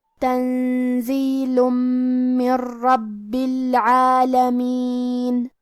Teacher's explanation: من ربی، حرف الباء پہ تشدید ہے، لہذا ہم تشدید کو ظاہر کریں گے اور 2 حرف کے برابر با کو پڑھیں گے